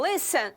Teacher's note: No caso de listen, nós temos uma consoante, vogal, consoante, mas o li é o mais forte, então listen